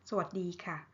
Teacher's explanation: สวัสดีค่ะ with falling tone ค่ะ